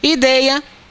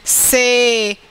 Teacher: a diferença entre esses dois ditongos é que um é aberto e o outro é fechado, mas ambos são decrescentes